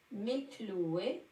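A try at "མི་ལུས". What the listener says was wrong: Il y a juste ce passage-là où tu as dit Mikloué. C'est pas vraiment Mik, hein, c'est Miloua, hein, c'est Miloua en tibétain, Miloua qui ne trompe pas.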